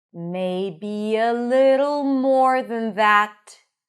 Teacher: we have the laxed I, little, flap T, dark L